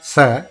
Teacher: When you say sa, as in Saraswati, it is dental. Sa, your tongue touches the lower part of the teeth in the lower jaw, and sa, the sound comes above your tongue.